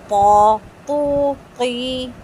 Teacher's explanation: تو کو پوری زبان اوپر اٹھا کر پڑھیں گے اور آواز باہر کی طرف نکالیں گے. اگر اندر کی طرف آواز لے کے جائیں گے تو تو قوف جیسا ہو جائے گا, ٹھیک ہے.